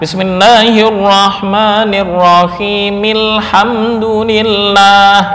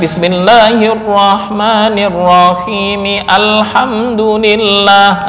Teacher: ketika diwasalkan dengan lafal sebelumnya yaitu bismillah maka hamzah tersebut enggak terbaca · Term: hamzah wasal